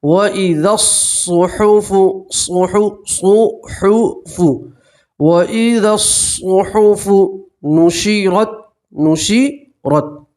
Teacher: الف اور یہ الف اور لام نہیں پڑھیں گے، تشدید ہے صاد کے اوپر تو اسے زال سے ملا کر پڑھیں گے